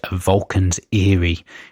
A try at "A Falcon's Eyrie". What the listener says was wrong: Falcons? Sounds like you said Vulcan. A Vulcan's Eerie. Falcon. I think maybe it is Falcon.